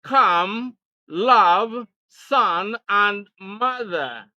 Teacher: the central vowel sound a as in come love son and mother